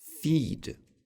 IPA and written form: fid (feed)